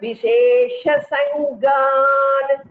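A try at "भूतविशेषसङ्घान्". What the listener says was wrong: Bhuta Vishesha Sanghan. Gha Mahaprana. Please pay attention to the Mahapranas, Bhagini.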